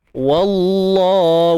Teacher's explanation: kalimah Allah ni pada lam kita kena baca dengan tebal. Taghliz.